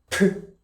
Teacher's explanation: Aspirated, air comes out.